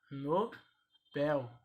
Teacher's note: Nobel é oxítona, sílaba tônica